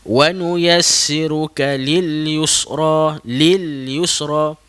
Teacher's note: Lil huruf lam sukun tersebut kita gantungkan lidah kita ke langit.